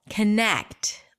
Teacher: It's the second syllable, connect. Longer, louder, higher in pitch. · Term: primary stress